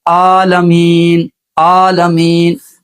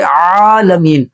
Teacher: آگے للہ رب العالمین، عالمین عین کے ساتھ ہے، ہم اس کو پڑھتے ہیں عالمین، عالمین، حمزہ کے ساتھ پڑھ رہے ہیں، اور حرف کو حرف کے ساتھ بدل دینا یہ لحن جلی ہے، اس کو بڑی غلطی کہا جاتا ہے۔ حمزہ کا مخرج شروع حلق، حلق کا وہ حصہ جو سینے سے ملا ہوا ہے، اور عین کا مخرج ہے درمیان حلق، تو یہاں پہ عین ہے، درمیان حلق سے عین ادا ہوتا ہے عالمین۔